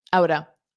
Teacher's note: Now out of will combine together to outa.